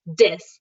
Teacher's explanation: There's an accent of English called Ebonics, and they do take the TH and make it to a dis